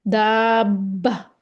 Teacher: دا کو ہم کھینچ سکتے ہیں کیونکہ آگے با کو ہم نے شدہ کے ساتھ پڑھنا ہے، زور کے ساتھ پڑھنا ہے، شدت کے ساتھ پڑھنا ہے۔